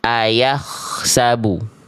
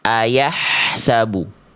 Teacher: Kalau ko itu lebih kasar, kalau ha kecil lebih bersih, berbisik, dan lembut.